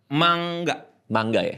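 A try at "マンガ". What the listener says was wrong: Cara bacanya mangga, bukan manga. Mangga buah mangga. Gak masalah sih sebenarnya.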